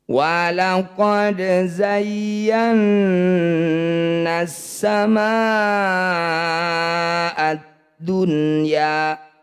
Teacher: ma yang bertanda layar panjangkan 6 harokat atau 6 ketukan. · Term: mad wajib muttasil